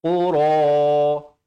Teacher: Qaf makhrajnya di pangkal lidah.